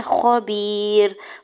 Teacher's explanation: या साकिन से पहले बा के नीचे जेर है, या मद्दा और दौड़ कर खींच के अदा करेंगे। रा के ऊपर 2 पेश की तनवीन और आगे आयत का वक्फ है, तो वक्फ करने की सूरत में रा को साकिन कर देंगे।